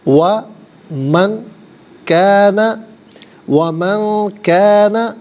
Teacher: وَمَن کَانَ، وَمَن کَانَ، من میں نون ساکن ہے، نون ساکن کے بعد کانا میں کاف ہے، اور یہ کاف حرف اخفا ہے، تو نون ساکن کو اخفا کے ساتھ پڑھیں گے۔ اخفا کہتے ہیں ناک میں آواز لے جا کر گنگنانا